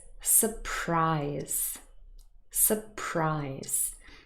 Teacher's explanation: So in this noun, the stress is on the last syllable, the second.